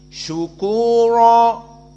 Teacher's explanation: maka di sini ikut Wars annafe seperti jumhur dibaca ro mufakhamah syukuro tidak bisa di sini dibaca ra tarqik karena sebelumnya dalam keadaan wau Sakinah · Syukura tidak bisa di sini dibaca ra tarqiq, karena sebelumnya dalam keadaan waw sakinah. Maka jika dalam keadaan waw sakinah dibaca tafkhim syukura. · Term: ra mufakhamah